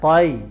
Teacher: اب یہ دیکھیں قاف کو موٹا پڑھیں گے اور یا سے ہم نے ملانا ہے